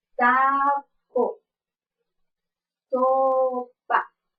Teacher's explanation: según su modo de articulación es fricativo y según su punto de articulación es alveolar Y esta es es sorda y no estamos haciendo ninguna vibración